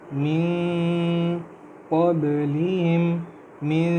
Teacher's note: من میں نون کی آواز کو ہم چھپا رہے ہیں جس کو ہم اخفا کہتے ہیں